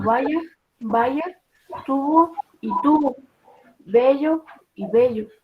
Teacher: la V se pronuncia de manera idéntica que la B y no se produce ninguna diferencia oral al decir palabras como vaya, tubo y tubo, bello y bello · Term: fonema B